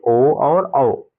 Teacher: हमारी आवाज कंठ से भी आ रही है और होठों का सहयोग भी हो रहा है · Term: कंठोच्च वर्ण